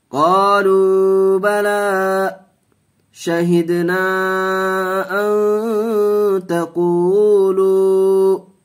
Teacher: یہاں واو مدہ کا قاعدہ، واو ساکن سے پہلے پیش ہے، ایک الف کھینچ کے پڑھیں گے. قالوا با زبر با لام کھڑا زبر لا قالوا بلا.